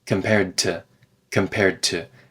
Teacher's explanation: we connect the D and T sounds together